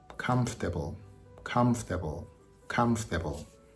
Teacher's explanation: tricky I looked it up in the uh Cambridge Dictionary and it actually has four syllables but when people speak they only use three